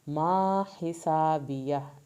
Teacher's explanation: ہا کو حلق سے پڑھیں گے ، سین کو سیٹی کی آواز کے ساتھ، آخر میں ہا